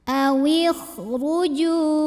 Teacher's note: Huruf ra dibunyikan secara tafkhim karena barisnya dhammah, dibacanya tebal